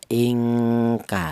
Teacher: nun matinya ini disamarkan atau dibaca samar atau dibaca ikhfa